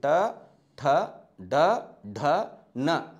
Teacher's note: ಮೂರ್ಧನ್ಯ ಧ್ವನಿಗಳು ಅಂತ ಕರೀತೀವಿ ಯಾವ ಧ್ವನಿಗಳು ಅಂತ ಕರೀತೀವಿ ಮೂರ್ಧನ್ಯ ಧ್ವನಿಗಳು ಅಂತಹೇಳಿ ಇವು ನಮ್ಮ ನಾಲಿಗೆಯ ಮೇಲ್ಭಾಗದಲ್ಲಿ ಒಂದು ತಗ್ಗಾದ ಭಾಗ ಇದೆ ನೋಡ್ರಿ ಅಲ್ಲಿ ಒತ್ತಿ ಉಚ್ಚಾರಣೆ ಆಗತಕಂತ ಅಕ್ಷರಗಳು